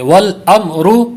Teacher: کلکلا ہو جائے گا، تو میم میں کلکلا نہیں کرنا بلکہ میم کو ساکن ہی رکھنا ہے، وَالْأَمْرُ، وَالْأَمْرُ، را کو پر کریں گے